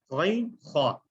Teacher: غین اور خا، اب دیکھیں اکثر لوگ اس کو ہا پڑھ دیتے ہیں، ہا باریک سے نا، خا، غین خا، یہ دو حروف ہیں جو حلق کے سب سے اوپر والے حصے سے ادا ہوتے ہیں، یعنی زبان کا سب سے پچھلا حصہ جہاں سے حلق شروع ہو جاتا ہے۔ نقشے کے اندر بھی آپ نوٹ کر سکتے ہیں کہ آپ کیسے آپ کا حلق کون سا ایریا اس میں استعمال ہو رہا ہے، غین اور خا اس جگہ سے ادا ہو رہا ہے.